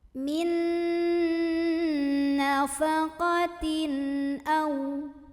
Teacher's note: Maka cara membunyikan tanwinnya ini dibunyikan dengan jelas an dan tidak perlu ditahan. Min nafaqatin au. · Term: izhar halqi